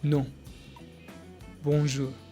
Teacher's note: Lips slightly rounded, nasal airflow. On. Without the N sound.